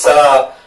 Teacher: और जब भी हम इनको बोलते हैं तो जो गर्म ऊष्मा है, गर्म वायु है जिसको हम ऊष्मा कह सकते हैं, वो मुंह से बाहर निकलती है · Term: ऊष्म या संघर्षी